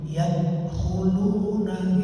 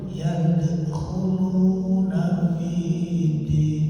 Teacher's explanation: Nah itu namanya qalqalah sugro karena matinya di tengah. Qalqalah ada pantulan. Nah, gitu. Jadi kalau tidak ada pantulannya, misalnya baca salah nih, yadkhuluna gitu.